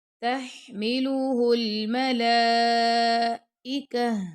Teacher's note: अब ता पे हम रुकेंगे तो ता की जो आवाज है वो हा में बदल जाएगी गोल हा में। · اب تا پہ ہم رکیں گے تو تا کی جو آواز ہے وہ ہا میں بدل جائے گی، گول ہا میں